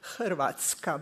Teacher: we have a R which makes syllables